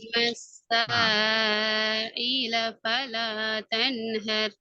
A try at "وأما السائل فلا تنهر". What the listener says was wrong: இப்ப ஐ உங்களோட பழைய இதுக்கு போய்த்திட்டு அதுவும் நார்மல் ட்ரக்குக்கு வரும் இ وأما السائل فلا تنهر நார்மலாக இ அ இ ஆ ஒய் ஒய் ஆ என்று போறது பிழை. அது தொண்டையினுடைய நடுப்பக்கத்திலிருந்து உச்சரிக்க நடுப்பாகத்தில் தொண்டையின் நடுப்பகுதியிலிருந்து உச்சரிச்சா தான் அந்த சவுண்ட் வரும். அது பிழை.